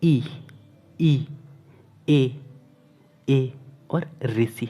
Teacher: ये जो स्वर है वो जीभ के अग्रभाग से निकलते हैं। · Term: अग्र स्वर